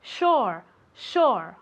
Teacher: Se escribe con una S y después una U, pero se pronuncia como si fuera SH